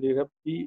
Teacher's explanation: اس کے بعد آگے لربی، اس میں اگلا کلمہ جو ہے با مشدد ہو رہا ہے، زور دے کے پڑھا جائے گا ، اس کو اگلے کلمے کے ساتھ ملاتے ہیں حمزۃ الوصل